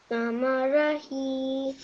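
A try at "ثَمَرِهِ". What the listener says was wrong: Over here, you're making the same mistake. Over here, just remember that this is a kasra. So just be careful over here.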